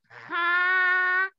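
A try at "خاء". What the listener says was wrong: खो, मुंह गोल कीजिए।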